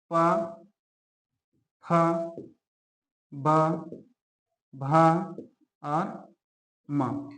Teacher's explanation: दोनों होंठ आपस में क्या होते हैं? टच होता है, स्पर्श होता है। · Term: ओष्ठ व्यंजन